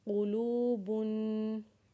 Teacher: लाम को जब वाव के साथ पढ़ेंगे तो उसे एक अलिफ के बराबर खींचेंगे और बा के ऊपर तनवीन होने की वजह से गुना करेंगे, जैसे क़ुलूबुन।